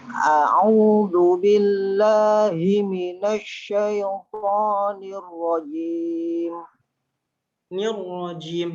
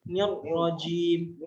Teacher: Jadi nunnya tipis, roknya tebal, tapi roknya sekali 2 kali getaran dia.